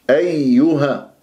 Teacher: الياء المشددة تنبر، أيها، ولازم أجيب صوت الياءين، أيها، ما أيها يختفي عندي الصوت، أو أيها أضغط على المخرج يتشوه صوت الياء ويطلع به هواء، والياء ليست من أحرف فحثه وشخص سكت، فانتبه.